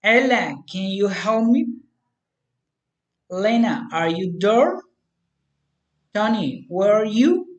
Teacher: Direct address rising intonation.